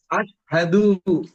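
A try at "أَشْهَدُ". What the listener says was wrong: দু টান হবে না, আশহাদু,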